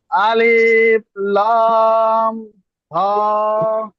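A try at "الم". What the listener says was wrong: না ওটা হা নয় তো, ওটা মিম।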